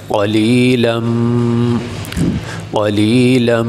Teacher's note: تو یہ لام کے اوپر تنوین ہے، تو تنوین کے بعد میم آ جائے تو تنوین کو میم کے ساتھ ملا کے پڑھا جاتا ہے، غنّے کے ساتھ، تنوین کو میم کے ساتھ ملا کے غنّے کے ساتھ پڑھا جاتا ہے۔ تو یہاں میم کے ساتھ ملا دیں گے، لام میم 2 زبر لم، قلیلم، قلیلم۔